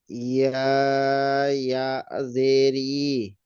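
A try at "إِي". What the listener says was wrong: ই, একটু টান দেন, টান কম হয়ে যাচ্ছে।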